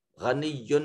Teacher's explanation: غین کو مفخم ادا کریں گے صفت استعلاء ہونے کی وجہ سے۔ یا کے اوپر تنوین ہے اور تنوین کے بعد عین حرف اظہار ہے، تو یہاں یہ یا کے اوپر تنوین سے جو نون پیدا ہو رہا ہے اس کو ظاہر کر کے ادا کریں گے۔